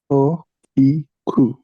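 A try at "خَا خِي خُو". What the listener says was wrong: খটা হয়ের মতো লাগতেছে। খ, খ একটা লাগবে গলার মধ্যে, তোমার একটা ইয়া লাগবে, খ ধাক্কা লাগবে, খ। খি খু।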